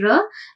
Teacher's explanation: Top back end palate, and when we say ya, the tongue tip is touching the upper palate, and when we are saying ra, the tongue tip is rolled and it is touching the front upper palate